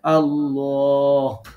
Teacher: যে দুইটা ওয়ার্ড দেয়া আছে একটা আল্লাহ তো আমাদেরকে পড়তে হবে ল পড়তে হবে মোটা পড়তে হবে আল্লাহ মুখ ঠোঁটটা গোল করতে হবে